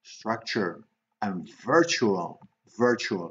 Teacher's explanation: So che, always che when you see the unstressed TU